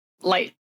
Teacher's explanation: We have the I and the ow. And so before voiceless sounds like T in light, we raise the vowel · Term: Canadian raising